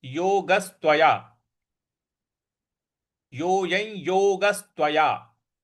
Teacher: योगस पे हमको बल लगाना है